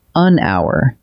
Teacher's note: We write it with an H, but the H is silent, so hour opens with a vowel sound. That is why we say an hour and never a hour.